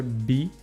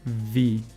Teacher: The B you do with your lips pushed together, B, and the V you do with your upper teeth to your lower lip.